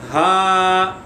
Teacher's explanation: آپ دیکھیں واو، اسی طرح اسے ادا کرنا ہے. ہا حلق کے نیچے والے حصے سے ادا کریں گے